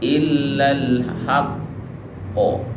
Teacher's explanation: Cara membacanya adalah dengan berhenti sebentar baru diucapkan qalqalahnya. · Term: qalqalah yang paling kuat